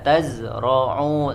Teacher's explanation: huruf Za juga sama mengalir suaranya Jangan jangan ada jeda